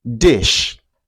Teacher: this is a voiced consonant and it's pronounced d. We can hear this sound at the beginning of the word dish.